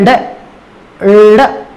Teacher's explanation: ऐसे व्यंजन जिनके उच्चारण में जिह्वा का अग्र भाग उठा हुआ रहता हो, साथ ही जिह्वा झटके के साथ उच्चारण को पूर्ण करती है, मुख द्वार से बाहर फेंक देती है उस ध्वनि को, तो ऐसे वर्णों को उत्तक्षिप्त या ताड़न जात व्यंजन कहा जाता है।